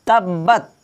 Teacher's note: বাটা দুইবার করে উচ্চারণ হবে, কারণ বার উপরে তাসদীদ দেওয়া রয়েছে